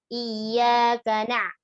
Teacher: Jadi ka-nya jangan kita ayun, tapi na-nya kita tekan dikit harokat fathahnya.